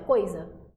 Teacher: O I, ele passa ali bem rapidinho por ele, ó, coisa, certo? Então, o O soa mais forte, ele é plenamente pronunciado e por isso ele vai ser a nossa vogal e o que o acompanha é a semivogal.